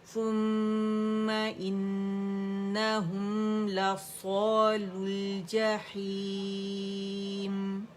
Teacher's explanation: لام دمہ لام سے مل جائے گا، واو ڈراپ ہوگا